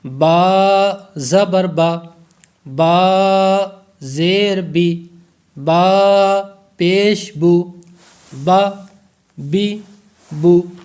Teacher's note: لفظ جو با ہے یہ ہونٹوں کے تر حصے سے ادا ہوگا۔ جو با کا مخرج ہے یہ ہونٹوں کے تر حصے سے ادا ہوگا۔